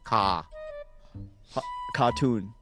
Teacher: There's no R when you say it. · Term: British R